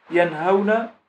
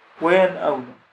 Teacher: تلاحظ هنا الجناس بين ينهون وينأون، والاختلاف بينهما في حرف واحد في الوسط في نوع هذا الحرف، لكن الحرف في ينهون الهاء وفي ينأون الهمزة وهما متقاربان مخرجا لأنهما من أحرف الحلق